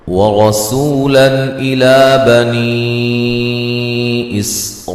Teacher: سوا مدہ ہے سین کو باریک سیٹی سے